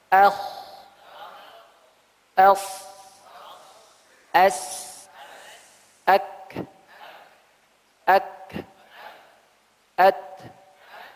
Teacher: anginnya lebih banyak keluar. Pitanya tidak rapat. Tenggorokannya tidak bergetar. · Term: hamsun